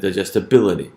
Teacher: This word is going to end in ility, because of that ity ending. Ity is a stress-imposing ending, and it assigns stress on the antepenultimate syllable.